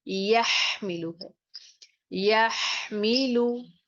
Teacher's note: अगर आप इसमें थोड़ी सी भी आवाज को ऊपर हलक की तरफ ले जाएंगे तो ये हा से ख में चेंज हो जाएगा। और क्या गलती की जाती है, यहमिलु को यखमिलु आप पढ़ेंगे, ठीक है।